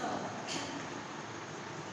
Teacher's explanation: इस स को बोलते समय जीभ हमारी मूर्धा से टच हो रही है, तालु और कंठ के बीच में मूर्धा। देखिए यहाँ पर ये आपका कंठ है और ये ऊपर का तालु है, इसके बीच में जब जीभ हमारी टच होगी, स्पर्श करेगी, तो इस स का उच्चारण होगा और इसे बोलते हैं मूर्धन्य स।